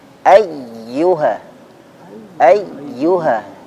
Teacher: Ya tasydid yang sebelumnya bukan tanwin atau bukan nun sukun, maka cara membacanya dinaikkan sedikit suaranya.